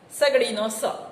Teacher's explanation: એના ઉચ્ચારણમાં જીભનો અગ્રભાગ ઉપલા દાંત પાસે આવે છે. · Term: દંત્ય સંઘર્ષી